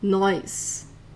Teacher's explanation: in other parts it does sound as if there's an i between the O and the S